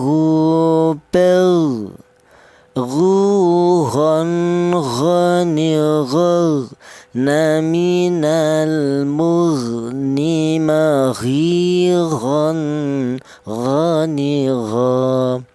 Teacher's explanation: Huruf ghin ini keluarnya huruf berasal dari tenggorokan bagian atas ya, dimana termasuk huruf halak tenggorokan bagian atas itu ditempati dua huruf, yaitu huruf ghin ini dan huruf kha ya.